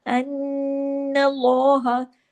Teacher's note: जबर है अल्लाह के नाम से पहले, इसलिए अल्लाह के नाम में जो लाम है वो हैवी भी हो रहा है, और नून पे तशदीद है, इसलिए यहाँ पर गुन्ना भी हो रहा है।